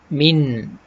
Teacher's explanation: Kalau kita sebut jelas, kita sebut min. Ujung lidah kena langit atas, tu jelas. Kita sama-samakan dia, jangan bagi kena.